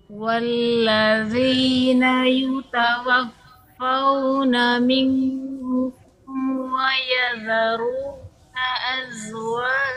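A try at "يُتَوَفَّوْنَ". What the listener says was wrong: Bukan fau ya bukan bukan yutawafau tapi yutawafaauu arahnya ke i.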